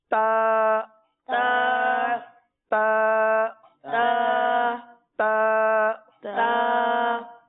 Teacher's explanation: زبان کی نوک اور اوپر کے دانتوں کی جڑ سے یہ ادا ہوتا ہے